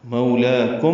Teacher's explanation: مولاکم وقفاً وصلاً اظہار شفوی ہے، آگے واو آ رہا ہے اس لیے اظہار شفوی واضح ہو. مولاکم ہونٹ بند ہوں، پھر واو میں ہونٹ ناتمام گول ہوں گے